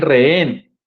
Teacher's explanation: la h es un signo ortográfico pero que no suena en este caso